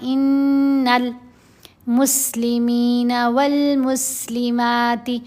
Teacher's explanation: اب میم دونوں جگہوں پر آیا، میم سے پہلے الف اور لام ہے، اور الف نہیں پڑھا جا رہا، لام پڑھی جا رہی ہے، یعنی میم حروف قمری میں سے ہے